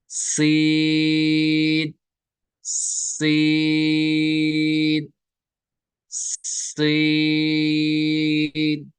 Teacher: सीन की आवाज नाक से नहीं निकलनी है, सीन, मगर सीटी निकलेगी, इन तीनों में सीटी निकलेगी।